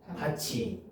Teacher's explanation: 티읕이 이모음을 만나면 치읒으로 바뀌는 거야